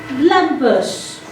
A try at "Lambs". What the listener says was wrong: The B is silent. The word is lambs.